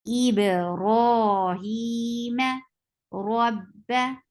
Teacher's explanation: ra is heavy because this is with fatha. Whenever ra is with fatha or dhamma, it is a heavy letter.